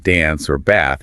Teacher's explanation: The a sound in words like dance or bath is usually the flat a like in the word cat.